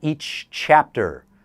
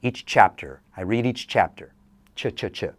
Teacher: These CH and J sounds, if they are back to back, you must pronounce both. They do not combine.